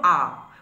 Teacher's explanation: বলে চিহ্নিত করব বাদবাকি রইল আ উচ্চারণ করলেই তোমরা দেখবে যে জিউহা পশ্চাতেও নয় সম্মুখেও নয় ঠিক মাঝামাঝি জায়গায় কিন্তু অবস্থান করছে · জিহ্বা পশ্চাতেও নয়, সম্মুখেও নয়, ঠিক মাঝামাঝি জায়গায় কিন্তু অবস্থান করছে, তাই আকে বলা হচ্ছে কেন্দ্রীয় স্বরধ্বনি জিহ্বার সম্মুখ ও পশ্চাতে অবস্থান অনুসারে।